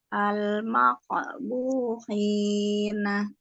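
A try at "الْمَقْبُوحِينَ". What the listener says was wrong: Ya, jangan terlalu panjang, cukup 2 harokat saja.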